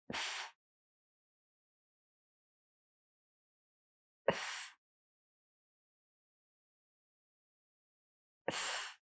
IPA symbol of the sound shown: θ